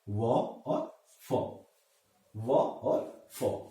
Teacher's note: दंत्य और ओष्ठ, दांत और ओठ, इन दोनों की सहायता से जिनका उच्चारण होता है उनको हम दंत्योष्ठ के नाम से जानते हैं।